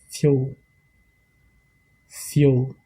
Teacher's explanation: Et quand le D est une consonne large, je prononce comme le son du D français, comme dans le mot Darwin, qui signifie le monde ou la planète. Le F, quand le F est une consonne fine, je prononce le F comme s'il y avait un Y après le F.